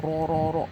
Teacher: رو رو رو موٹا، ہلکی سی وائبریشن آئے گی.